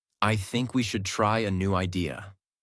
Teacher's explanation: Voice goes down at the end. This is called falling intonation